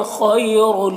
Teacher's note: یہاں پر یا لین ہے، نرم آواز کے ساتھ جلد پڑھیں گے۔